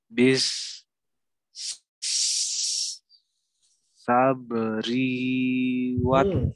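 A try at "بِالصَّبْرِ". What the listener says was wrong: Ri-nya pendek.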